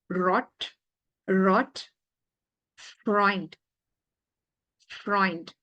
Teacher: relax the tongue more of a rolling sound than the English R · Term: German R